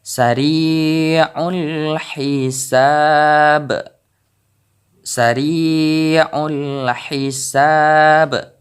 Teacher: Jadi ba ini merupakan qalqalah daripada huruf ba. Jadi kita baca besar dan jelas. Karena ini qalqalah kubra, yaitu terdapat di saat kita wakaf ataupun di saat kita berhenti membaca dari kalimat Al-Quran.